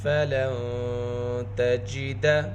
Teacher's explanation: فا کے اندر صفت ہمس ہے، صفت ہمس حرکت کی حالت میں بھی باقی رہتی ہے۔